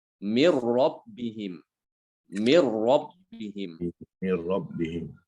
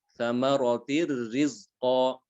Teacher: Maka di sini dia diidghamkan nunnya ke ro, tapi tanpa gunnah. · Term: idgham tanpa gunnah